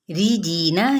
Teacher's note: ये री बारीक पढ़ा जाएगा